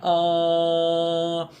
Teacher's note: R sound often referred to as the open and back because our mouth opens uh and the tongue has to move down and to the back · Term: dentist vowel sound